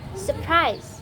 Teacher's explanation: And the last is the word surprise is often pronounced surprise instead of surprise, with the first R gone for easier and smoother speech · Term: dissimilation